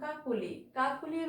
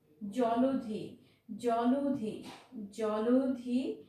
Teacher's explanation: জলধি ওকারান্ত হয়ে যাচ্ছে, অর্থাৎ মাঝখানে অটা ওকারান্ত হয়ে যাচ্ছে। বলছে কি মাঝখানে অ এর পরে যদি হ্রস্বইকার, হ্রস্বইকার আছে, এখানে হ্রস্বইকার আছে, বা হ্রস্ব উ থাকে, হ্রস্ব কিংবা হ্রস্ব উ থাকে, বা হ্রস্ব উকার থাকে, সেক্ষেত্রে হয়ে যাচ্ছে বিরতি, বিরতি, অর্থাৎ ওকারান্ত হয়ে যাচ্ছে। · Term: সংবৃত